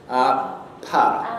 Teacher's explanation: you can hear that little explosion of sound as the sound is released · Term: stop consonants